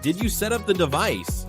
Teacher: Your voice should rise at the end to show it's a question. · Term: intonation